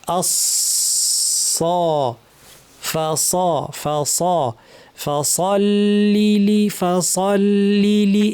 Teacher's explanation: সদ জিহ্বার শীর্ষ নিচের পাটির দাঁতের গোড়ায় লাগিয়ে আস ভারী আওয়াজ করলে, অর্থাৎ উপরের দিকে আওয়াজটা ঠেলে দিলেই সদ হবে। যদি পাতলা আওয়াজ হয় সিন হয়ে যাবে।